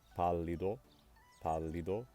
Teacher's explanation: that word receives stress on the third-to-last syllable